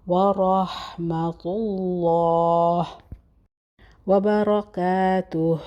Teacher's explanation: موٹا، ہا کا مخرج ادا کرنا ہے اور لام سے پہلے، اللہ کے لام سے پہلے ضمہ ہے، پیش ہے تو ہم موٹا پڑھیں گے لام